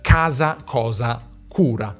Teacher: la C seguita da A, O, U in italiano si pronuncia normalmente /k/, con un suono duro, velare